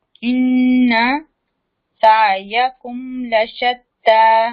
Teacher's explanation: کیونکہ لام کے اوپر زبر ہے, فتح ہے. تا کو ہم لمبا کریں اس کے اوپر کھڑی زبر ہے